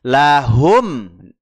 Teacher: mim sukun bertemu Hamzah izhar syafawi izhar syafawi ya tanpa harus ditahan cukup mingkem saja